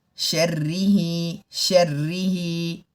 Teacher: را کے نیچے زیر ہے تو باریک پڑھنا چاہیے